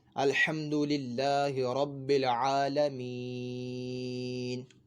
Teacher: اب دیکھیں ہم یہاں پہ رکے، وقف کیا تو یہ نون کے اوپر جو زبر ہے یہ نہیں پڑھا بلکہ ہم نے نون کو ساکن کر دیا